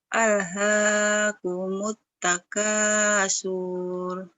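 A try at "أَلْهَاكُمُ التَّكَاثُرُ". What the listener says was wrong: Surnya pendek, nggak panjang karena nggak ada madnya.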